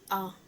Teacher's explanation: मध्य स्वर में आता है जो जीभ का मध्य का भाग होता है, जैसे कि आ।